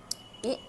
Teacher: अब ये समझते हैं कि कंठ तालव्य से कौन से स्वर होते हैं, तो कंठ तालव्य से हमारे होते हैं आपके ई ए, जो है हमारे कंठ और तालव्य से निकलने वाले मूल स्वर हैं। ए कहाँ से निकलते हैं, कंठ तालव्य से, कंठ और तालु से निकलते हैं।